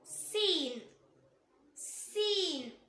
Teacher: நாவோட நுனி கீழ் வரிசை நடுப்பற்களோட ஈரை தொடும்போது உச்சரிக்கணும்